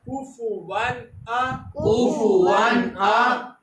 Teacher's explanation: ایک 6 حروف میں سے کوئی بھی حرف نون ساکن یا تنوین کے بعد آ جائے تو اظہار کا قاعدہ ہوتا ہے، یعنی ظاہر کرنا. یہاں پر ہم اس کو ظاہر کر کے پڑھیں گے واو دو زبر ون، یہاں غنہ نہیں کریں گے